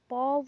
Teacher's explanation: प वर्ण ओष्ठ भी है, स्पर्श व्यंजन भी है, अल्प प्राण भी है और अघोष वर्ण भी है